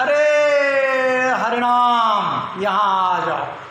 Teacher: किसी को जब बुलाया जाता है, किसी दूरस्थ व्यक्ति को जब बुलाया जाता है तो ऐसे कहा जाता है, अरे हरिनाम यहाँ आ जाओ। तो जो अरे कहते हैं वो प्लुत हो जाता है ताकि दूर तक आवाज गूंजे